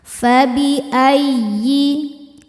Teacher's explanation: Ya tasydid yang tidak didahului tanwin atau nun sukun maka cukup dibaca dengan nabr, naikkan intonasi suara kita. Fabi ayyi a hukumnya mad badal sebab ada hamzah yang dipanjangkan.